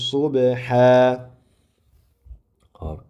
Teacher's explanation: to'xtagan paytimizda vaqf qilgan paytida alif bilan mad qilib vaqf qilinadi